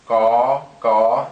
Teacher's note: You notice all the consonants also carry an innate long tone sound. So ga, you want to make sure that tone stays flat and long